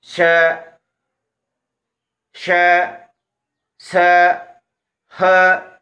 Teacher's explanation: इन वर्णों का उच्चारण करते समय मुख से गर्म श्वास बाहर की ओर आती है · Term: ऊष्म व्यंजन वर्ण